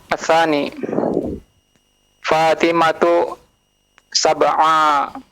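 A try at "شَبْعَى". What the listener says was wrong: Syab'a. Nah, hati-hati sin dengan shin. Nah, yang titik 3 dengan yang tanpa titik. Syab'a. Coba sekali lagi. Syab'a.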